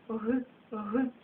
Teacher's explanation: літера га вимовляється приглушено